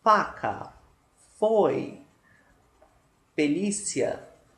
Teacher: nós temos os dentes superiores encostando no lábio inferior e nós temos essa produção do som de F. Vocês podem perceber que há uma expulsão de ar pela boca, mas nós não ouvimos nenhum barulho, só mesmo esse contato de dente e lábio.